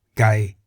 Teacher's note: Gai in the low tone meaning chicken